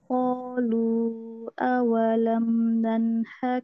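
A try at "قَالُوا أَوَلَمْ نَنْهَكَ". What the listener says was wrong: Kurang panjang, Afwan, lu-nya kurang panjang.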